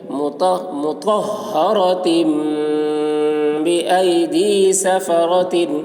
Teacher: تنوین کے بعد با آ رہا ہے، اس لیے تنوین کو میم سے بدل کر غنہ اور اخفا کے ساتھ پڑھیں گے. اس کو اقلاب کہتے ہیں.